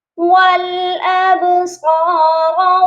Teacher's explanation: با ساکن پر قلقلہ ہوگا